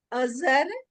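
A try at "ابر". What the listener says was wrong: नहीं नहीं, ज नहीं है। अबर। वो बे का नुक्ता है, फिर उसके बाद रे है। अब अब्र भी हो सकता है। अबर या अब्र अभी फिलहाल के लिए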